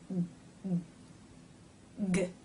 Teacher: To stop the airflow, the back part of the tongue reaches up and touches the soft palate, cutting off the air